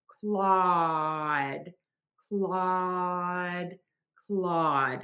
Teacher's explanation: So for that, you're going to open your mouth really wide for that ah, oval shaped mouth. Tip of the tongue is low, back of the tongue is pulled high up. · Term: open ah sound